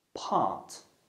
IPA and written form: pɑːt (part)